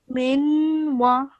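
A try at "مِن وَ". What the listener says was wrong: Remember not to say minwa. You're just producing a nasal sound. Okay. Not a solid noon sound.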